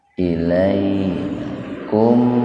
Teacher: mim mati ketemu wawu secara terpisah, jadi mimnya betul-betul dibaca idhar jelas, syafawi di bibir. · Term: idhar syafawi